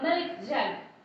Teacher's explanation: The stress goes on milk.